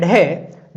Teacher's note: ढ का जो उच्चारण स्थान होता है वो होता है आपके मूर्धा